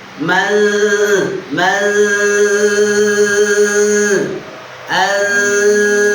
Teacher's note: ketika nun sukun bertemu ta, maka lidahnya jangan langsung menyentuh ke ta